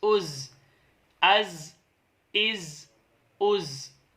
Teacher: جب ہم نے اسے ادا کیا تو سیٹی کی آواز آئی، کیونکہ یہ حروف صفیریہ میں سے ہیں